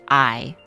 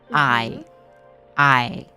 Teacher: even if you listen to the word I you can kind of hear um the A and the E joining together